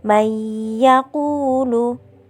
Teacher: itu udah ya dimana ia termasuk salah satu huruf Idgham Bighunnah cara membacanya masuk disertai mendengung